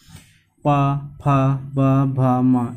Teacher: इसमें हमारे दोनों ओंठ आपस में टच करते हैं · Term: ओष्ठ